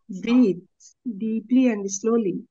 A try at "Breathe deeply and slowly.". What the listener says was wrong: लेकिन आपने कितनी तेजी से बोला, वर्ड है स्लोली और आपने बोला फास्ट। स्लोली, स्लोली, स्लो है ना, slowly breathe deeply and slowly, and slowly, है ना। स्लो को और स्लो बोलना है ना।